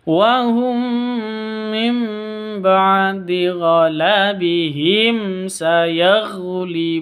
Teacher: kalau mim mati bertemu dengan Sin itu jelas bacanya karena izhar syafawi